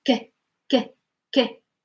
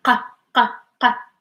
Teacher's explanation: If you notice, even my tongue is like I pull it back, q. So the k sound, my tongue is relaxed. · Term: q sound